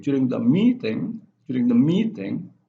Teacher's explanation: its flat and medium and goes up at meeting